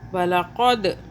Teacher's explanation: क़ाफ को मोटा क़ौ पढ़ा, काफ बारीक नहीं पढ़ना